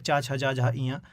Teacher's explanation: जो चा वर्ग होता है, चा, छा, जा, झा, इया, तो इनमें तालु का प्रयोग होता है, जीव तालु को टच करती है।